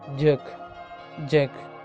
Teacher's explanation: Affricate, compress the air and release gradually with a friction. Voiced sound ആണ്.